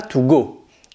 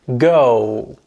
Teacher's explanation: En anglais, on va prolonger le O, comme s'il y avait trois W derrière. Go. Voilà.